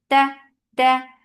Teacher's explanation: Ta, very sharp sound, no flow of sound.